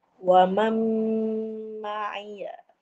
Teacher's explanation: Idham al-ghunnah. Dia masuk terus ke huruf mim bersama dengung